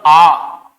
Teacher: आ बोलेंगे आ, तो थोड़ा सा मुंह खुलेगा और हल्का सा जीभ पीछे आएगी। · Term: पश्च स्वर